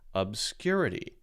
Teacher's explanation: that tells you where the stress on the word is so the stress on the word is clearly the second syllable